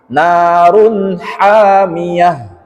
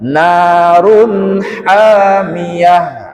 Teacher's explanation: Dhammatain itu berarti tanwin. Tanwin bertemu huruf ha, maka sama dengan tadi namanya izhar halqi, dibaca jelas, tidak didengungkan juga tidak disamarkan. Jadi narun langsung run, R-U-N, run.